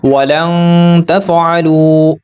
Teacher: واو ساکن سے پہلے پیش ہے، واو حروف مدہ، پیش کو 2 حرکات کے برابر لمبا کریں گے۔